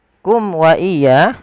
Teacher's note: di sini ada mim mati bertemu dengan huruf waw, di mana kita namakan dengan idhar syafawi, suara mimnya dijelaskan